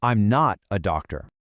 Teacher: The most critical piece of information here is the not, so you got to stress it.